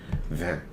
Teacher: the N sound is like closing it off with your nose rather than with your tongue.